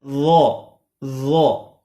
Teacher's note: ظا کا مخرج زبان کی نوک اور سامنے کے جو دانت ہیں ان کا کنارہ، لیکن آواز موٹی نکالنی ہے